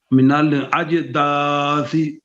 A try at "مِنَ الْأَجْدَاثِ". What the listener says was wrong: لام میں حرکت نہیں ہونی چاہیے.